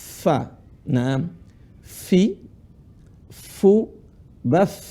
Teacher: Ujung gigi seri atas ketemu bibir bawah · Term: huruf fa